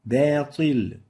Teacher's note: make sure to attenuate the ba, give it tarqiq, not tafkhim